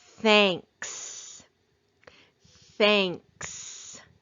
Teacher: in this word digraph th it's going to make its unvoiced sound